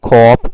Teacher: In cop we have o, which is a back vowel.